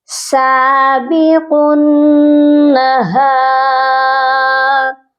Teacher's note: قاف کو نون مشدد سے جب ہم ملائیں گے تو نون مشدد پر غنہ لازمی کریں گے